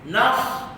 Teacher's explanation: Huruf sad, hujung lidah sentuh sentuh antara gusi dan gigi bawah.